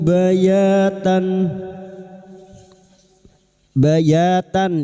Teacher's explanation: ya fathah disusul alif, dua harakat mad thabi'i. Bayatan, fathah tanwin pada surat ta bertemu hamzah, idhar halqi.